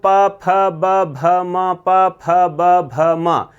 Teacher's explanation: प वर्ग का उच्चारण स्थान क्या कहलाता है? ओष्ठ कहलाता है।